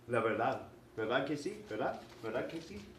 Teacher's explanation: when it's starting the second syllable of a word, it sounds like a th. And when it's ending a word, it can sound almost inaudible, like a th.